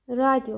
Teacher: tələffüz zamanı radio formasında y səsi artırılır və səs artımı hadisəsi baş verir